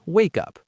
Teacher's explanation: it often sounds like one word, wake up. The consonant sound links to the vowel.